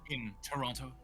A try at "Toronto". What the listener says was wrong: Excuse me, you don't pronounce the T. it's Oronto.